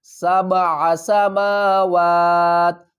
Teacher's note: عین کو ہم حلقے درمیان والے حصے سے ادا کریں گے